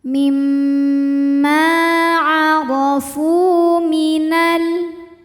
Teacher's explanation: Kemudian fu hukumnya adalah mad tabi'i zahiri karena ada waw sukun yang sebelumnya berharokat dhammah, maka huruf fa panjang 2 harokat.